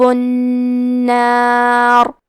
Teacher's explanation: کلمت النار میں نون پہ تشدید ہے تو ہم 2 حرف کے برابر نون کو پڑھیں گے.